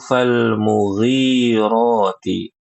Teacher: Yang panjang ri-nya, mu-nya pendek. Ini banyak kaum muslimin yang membaca fal-mughirati, kebalik, mu-nya panjang.